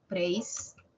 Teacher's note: No es la I la que tiene la mayor fuerza de voz, es la E. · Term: diptongo